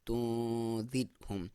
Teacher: اس را سے پہلے زیر ہے تو ہم اسے باریک پڑھیں گے